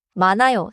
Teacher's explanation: With the 니은히읗 cluster before 아요, 히읗 is not pronounced and 니은 links forward.